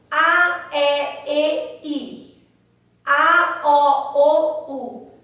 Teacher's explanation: a nossa língua vai subindo à medida que essas vogais vão sendo pronunciadas